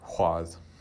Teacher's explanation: in eastern Iceland, there remain some older speakers who will say hwað with that old W sound